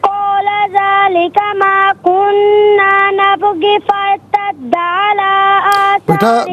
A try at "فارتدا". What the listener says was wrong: بیٹا آپ غلطی کر رہی ہو، فارتدا اس کو ذرا کھینچ کے پڑھیں گے۔ فارتدا، یہ ارتدا میں جو آخر میں دال الف زبر دا ہے نا، اس کو ایک الف کی مقدار کھینچ کر پڑھنا ہے، ٹھیک ہے؟